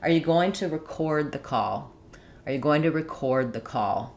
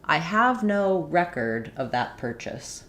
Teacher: So if we apply our rule for a verb, we want to be stressing on the second syllable. So rather than having a long clear vowel in the first syllable for the re, we're going to have it be reduced vowel, it's going to sound like ri.